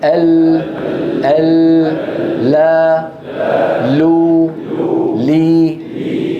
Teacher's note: حيز اللام من أدنى حافتي اللسان إلى منتهى طرفه مع ما يحاذيهما من الحنك الأعلى.